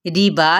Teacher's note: रिबा यहाँ पे ज़ेर है तो ये बारीक पढ़ा जाएगा